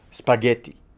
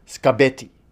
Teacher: In spaghetti, the P is voiceless and the G is voiced, but in scabetti, as she said it, the K is voiceless and the B is voiced. So it's in this case as if the feature voice has moved from one sound to the next.